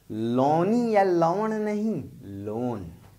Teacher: खड़ी बोली में दीर्घ स्वर टूट कर ह्रस्व में बदल गए